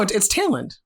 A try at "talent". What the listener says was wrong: Talent. Al, not ale. Say towel. Towel. Say towel. Ent. Talent. Are you reading it as tail, like T-A-L-E? Talent? you cut it off at that L for the word. It's talent.